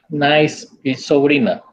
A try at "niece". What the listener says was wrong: Es sobrina y la pronunciación correcta es niece. Porque nice es bonito o bonita. Nice. Niece, el sobrino.